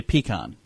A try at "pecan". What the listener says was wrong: Pecan. put too much emphasis on the E. Pecan.